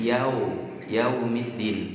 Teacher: Yau, bukan yau, tapi yau. Bibirnya dimonyongkan, lebih dimonyongkan. Kalau kurang monyong menjadi o nanti.